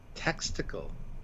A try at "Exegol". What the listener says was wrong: You mean Exegol? You said texticle with a T like testicle. Exegol.